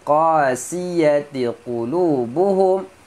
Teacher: Qasiyati qulubuhum, mim mati bertemu mim, masukkan mim pertama ke dalam mim yang kedua, dengung